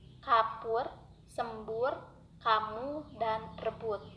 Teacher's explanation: Menjadi lebih singkat karena posisi lidah berada agak rendah apabila vokal U itu berada pada suku kata tertutup